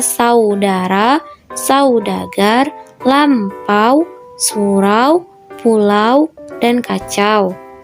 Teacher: Dan yang ketiga, diftong naik menutup mundur. Au.